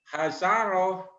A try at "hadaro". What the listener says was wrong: Hadaro. Jangan hasaro. Hadaro. Hadaro.